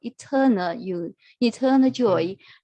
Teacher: So the stress is on the second syllable, eternal joy